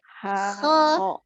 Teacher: huruf kho itu kan dari apa namanya al-halqiyah, tenggorokan bagian atas, jadi tidak melibatkan dua bibir ya, bukan syafatain. Maka dia cuma dari al-halqi saja.